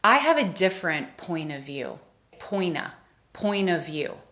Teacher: Here the word point ends in a T, a consonant, so we combine that with the word of, and it all just kind of runs together.